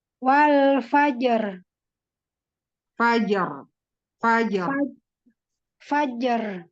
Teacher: Huruf ra sukunnya tebal. Iya. Ya, karena sebelumnya ada sukun.